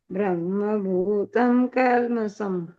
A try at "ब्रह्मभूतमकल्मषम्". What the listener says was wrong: ब्रह्म भूतम कल्मषम बोला है ना, तो ब्रह्म भूत मैं पूरा बोलना है, ब्रह्म भूतम नहीं बोलना है, ब्रह्म भूतम मकल्मषम मैं कल्मषम।